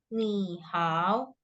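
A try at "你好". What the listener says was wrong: Ya, jangan ikutin dia tiga-tiga ya.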